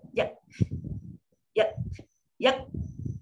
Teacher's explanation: Berhenti suara, lepas tu lepas angin tu sikit dia. Yak. Putus.